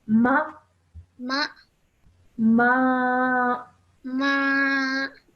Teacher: we stretch the sound out for 2 seconds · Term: alif madda